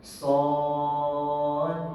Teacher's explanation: terdapat huruf qalqalah, kita kena raikan shad. D tu kena ada. Jangan shad mati terus.